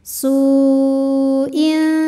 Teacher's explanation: tanwinnya dibaca samar-samar, siap-siap menuju huruf fa disertai dengung. Su'in, dengung dan samarnya sama. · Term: ikhfa awsat